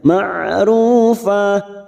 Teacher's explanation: ain memiliki sifat tawasud, jangan samakan dengan hamzah. Ma'rufa, ru dima bertemu sukun 2 harokat.